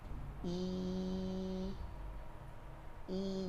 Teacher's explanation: sufla turunkan rahang bawahnya I ketika dia berbaris kasrah War agak terangkat sedikit lidah kita yang di tengah lidah kita itu i i jangan fokus sama senyum Fokus sama turun rahang